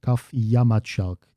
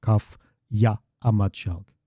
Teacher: So kaf ya amatchalk, but we drop this second a because there's already an a in amatchalk because there's a glottal stop. So there's a bit of krasis going on there, which is the merger of the compression, if you will, of vowels. So then this second ya, the second a in ya is dropped, and you get kaf yamatchalk instead of kaf ya amatchalk.